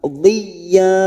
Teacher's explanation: Ya yang bertasdid hanya masuk tanpa ditekan lama-lama.